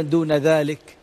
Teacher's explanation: الكاف ساكنة تحتاج إلى همس حتى توضح أن في كاف، ما تحركها، لكن الهمس مطلوب لتبين أن هناك كاف حتى تكون ذلك تختفي.